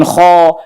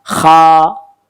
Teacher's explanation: jadi bacanya bukan kho, ini tetap mangap kha